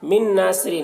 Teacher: नून साकिन के बाद नून है हुरूफ यूमी में से, तो नून को नून से मिलाकर गुन्ना के साथ पढ़ेंगे, इसको इदगाम नाकिस कहते हैं.